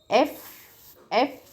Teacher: lower lip touches to Upper Teeth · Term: labio dentals